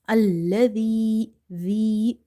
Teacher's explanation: Zal is from the tip of your tongue when it touches the inner edges of your top two front teeth. Allazi zi and you have to suppress the sound here.